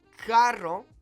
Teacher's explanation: Carro with that rolled R means car